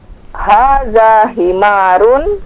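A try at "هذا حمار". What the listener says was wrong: Ah, intonasinya bagaimana? Ah, itu pertanyaan. Ini bukan pertanyaan.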